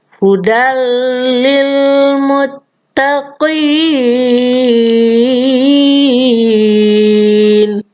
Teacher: nun sukun nya sudah hilang dileburkan ke dalam huruf lam jadinya hudal maka disinilah anak-anak yang namanya idgham bilagunnah hudallilmuttaqin yay